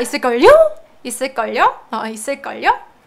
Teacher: You can hear that higher pitch at the end, right? As if you're asking a question.